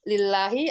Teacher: Dipengaruhi oleh huruf harokat sebelumnya. Jadi kalau yang lillahi itu tipis atau tebal bacanya? Bacanya tipis. Kenapa? Karena sebelumnya berharokat kasroh.